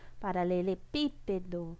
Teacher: Se a gente contar última, penúltima, antepenúltima, então é uma proparoxítona, tá? Porque a sílaba mais forte é a antepenúltima